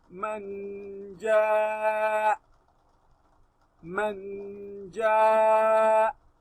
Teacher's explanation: Since we are stopping on this hamza, you must break the voice. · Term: breaking of the voice